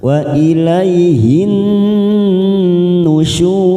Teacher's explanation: Nun yang bertasdid kita tekan tiga ketuk wa ilaihin nusyur syur Mad Arif sukun empat harakat kita panjangkan · nun yang bertasdid kita tekan 3 ketuk.